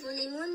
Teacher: ظلمون می‌بینیم که واو ساکن مقابل پیش مد اصلی است و نون اینجا به سبب وقف کردن ساکن میشه و مد عرضی هم صورت می‌گیره